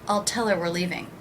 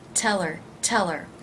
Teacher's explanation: I reduced the word her by leaving out the H.